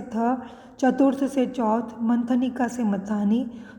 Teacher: यह हिंदी की महाप्राण अघोष स्पर्श दंत्य ध्वनि है। इसका विकास प्राचीन भारतीय आर्य भाषा की थ, स्त, स्थ ध्वनियों से हुआ है।